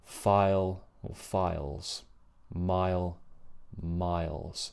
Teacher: It's the I vowel, which begins with lots of open space, much more open space in comparison to A.